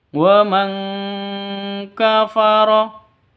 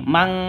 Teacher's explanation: nun mati bertemu dengan Kaf cara bacanya samar didengungkan siap-siap huruf ke huruf kafnya ya terus Nun matinya itu ditambah